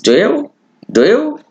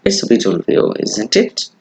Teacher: with rising intonation, it sounds like a real question